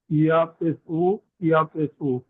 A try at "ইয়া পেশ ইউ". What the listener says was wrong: যে ইয়া পেশ উ হবে না, ইয়া পেশ ইউ। ইউ। জি, ইউ।